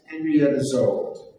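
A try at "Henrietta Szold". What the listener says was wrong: The S is pronounced as an S in Hungarian. She always wrote with a summit. Summit, Aleph, Lamed, Dalet.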